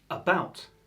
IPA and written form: əˈbaʊt (About)